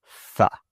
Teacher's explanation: You can see for all of these, my tongue is between my teeth, and that's how I get that sound. The air is moving out of my mouth as my tongue is placed between my teeth.